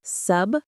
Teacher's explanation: The stress is on the second syllable, sist.